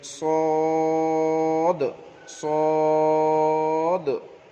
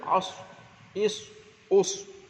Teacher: জিবের আগা এবং সামনের উপর নিচে দুই দাঁতের আগার সঙ্গে লাগিয়ে উচ্চারিত হয় সদ